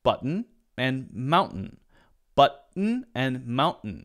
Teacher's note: Americans May often skip the T the T sound for example in Mountain after the n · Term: stop T